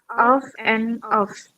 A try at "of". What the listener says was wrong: Re- Remember, yeah, most of our learners are not aware the sound. It should be ob, b sound. Remember, this is ob, this is off. Of is ob, like parts of speech.